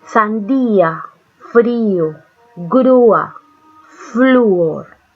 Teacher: una vocal cerrada tónica más una vocal abierta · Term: hiato